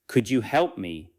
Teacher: Could you help me with help strong and could you lighter? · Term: lighter, unstressed words